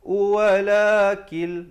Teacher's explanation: Walakil, di situ idgham bila gunnah, masuk tanpa dengung